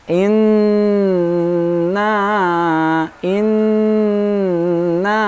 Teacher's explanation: ingat adalah bacaan gunnah Inna Inna Nun syiddah bacaan menurun nah dengung lebih panjang daripada Mad Thobi'i